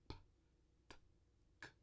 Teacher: São as três oclusivas surdas, porque se produzir só a consoante, não tem vibração das cordas vocais